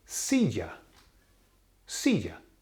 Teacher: Well, it ends with A, therefore it's a nose rule, and therefore the emphasis falls on the second last vowel, which is the I.